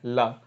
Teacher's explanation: जब ला का उच्चारण करते हैं तो जो वायु है वो मुख के अगल बगल भाग से प्रवाहित हो जाती है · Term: पार्श्विक व्यंजन